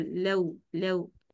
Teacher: जबर, सीधे होंठ और फिर फौरन से गोल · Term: वाव लीन